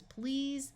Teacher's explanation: EA will have its usual long e sound and the S will say Z